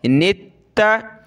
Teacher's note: ता को सख्त करेंगे तशदीद की वजह से